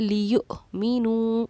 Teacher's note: باقی ہر الفاظ میں آپ کو دھیان رکھنا ہے کہ نہ تو آواز مجہول ہو نہ ہی جھٹکا ہو، لیکن حمزہ ساکنہ ایک ایسا کیس ہے جس میں ہمیں جھٹکا کر کے پڑھنا ہوتا ہے